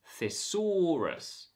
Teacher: not a voiced th sound the this word is fear thesaurus the second syllable is stressed and it has an or vowel thesaurus it's not thisaurus this is thesaurus the third syllable has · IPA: /θɪ ˈsɔː rəs/